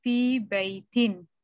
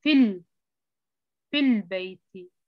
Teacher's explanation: the word fi has long kasra, but when it is followed by al, the kasra is shortened